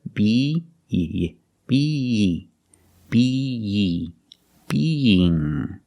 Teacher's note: We separate the 2 sounds with the Y sound, but it's a soft Y sound.